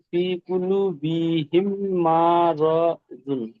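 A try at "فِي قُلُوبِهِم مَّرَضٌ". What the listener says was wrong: জি, ফি কুলু, কুলু লুটা টান আছে, ঠিক আছে। ফি কুলু বিহিম মারাদুন।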